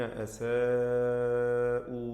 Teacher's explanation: മദ് മുത്തസിൽ വാജിബ് എന്ന ദീർഘം നൽകി 4-5 ഹറക്കത്തിൻ്റെ അളവിൽ അലിഫിനെ ദീർഘിപ്പിച്ച് പാരായണം ചെയ്യണം, നിർബന്ധമാണ്.